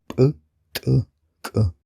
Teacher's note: il faut fermer la glotte, augmenter la pression dans la bouche et relâcher brutalement, ce qui leur donne un petit côté explosif : [p’], [t’], [k’]. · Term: consonnes éjectives